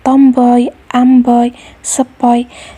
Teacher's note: Terdapat perubahan kualitas vokal madya belakang bundar sebagai vokal pertama yang berubah menjadi vokal tinggi depan tak bundar i sebagai vokal kedua. Diklasifikasikan diftong naik karena perubahan kualitas dari vokal lebih rendah kemudian menjadi vokal yang lebih tinggi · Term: diftong oi